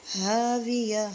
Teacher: یہاں پہ گول تا کو ہاں میں چینج کر دیں گے · ہا کو اس کے مخرج سے ادا کریں گے یہ حلق کے آخری حصے سے ادا ہوتا ہے اور واو پر لپس کو گول کریں گے اور یہاں پہ